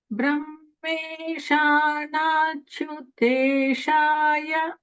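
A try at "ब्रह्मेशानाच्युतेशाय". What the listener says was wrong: And everyone notice the holding in not chu. It's holding after dirgha, not chu.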